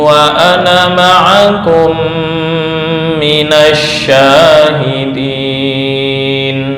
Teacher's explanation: Ana ini yang kemarin disebut dengan sifir mustatil, artinya semua ana yang artinya saya dalam Al-Quran dibaca pendek seluruhnya, nggak ada pengecualian